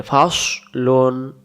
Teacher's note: এখানে সদ অক্ষর মোটা করে